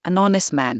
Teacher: The H is silent, so the first sound is a vowel. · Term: silent H